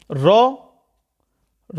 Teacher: र र क्या है लुंठित है और र को प्रक पित भी बोलते हैं